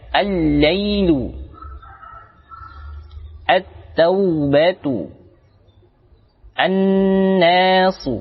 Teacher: Alif lam syamsiyah itu melebur pada huruf setelahnya bila bertemu dengan huruf ta, sa, dal, zal, ro, zai, sin, shin, swad, bod, to, vo, lam, dan nun.